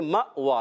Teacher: جھٹکا دے کر پڑھیں گے، اور واو پر کھڑا زبر آنے کی وجہ سے ایک الف کھینچنا ہے